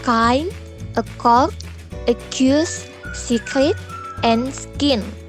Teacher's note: When we pronounce the phoneme K, saluran udara benar-benar tersumbat dengan mengangkat langit-langit lunak dan mengangkat bagian belakang lidah untuk menyentuh langit-langit. Ketika lidah diturunkan dari langit-langit lunak, udara keluar melalui mulut dengan suara eksplosif.